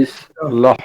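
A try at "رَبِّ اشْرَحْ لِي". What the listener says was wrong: রাহ, এটা কোন হা? লম্বা হা, হলকের মধ্যখানে, কর্ণনালীর মধ্যখানে। রব্বি ইশরাহ লি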